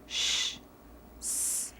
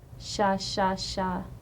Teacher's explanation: a fricative blowing sound like Shh